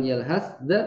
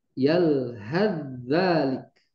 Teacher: Jadi langsung ke zal. Sa-nya hilang sama sekali. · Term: diidghamkan